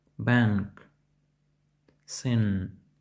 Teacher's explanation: звук вимовляється як український н однак трохи вниз і дещо протяжливо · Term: звук н